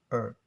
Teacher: In Americans, they pronounce it herb. So the H is silent, but in British accents, it's will be pronounced it really clear, like herb.